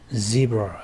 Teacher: Z 소리는 S의 유성음입니다. 유성음이라 하면은 우리가 배웠다시피 성대가 울리는 것인데요. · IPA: /z/